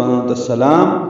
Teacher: انت میں اخفا ہوتا ہے نون ساکن کے بعد تا آنے کی وجہ سے ، تا کو السلام کے سین سے ملا دینا ہے، انت